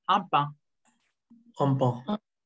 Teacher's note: Por ejemplo, un pan, como sigue una consonante, suena nasal